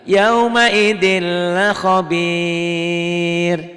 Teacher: Ini lam. Karena ketemu lam bunyi N-nya hilang. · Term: idgham bila gunnah